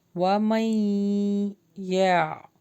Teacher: غنہ ہو رہا، نون اسکپ ہوگا، میم جو ہے یا سے ملے گا